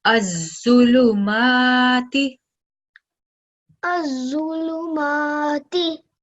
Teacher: we're going to press down on the sound, emphasize on it, and make sure that we do produce Zo sound 2 times. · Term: shadda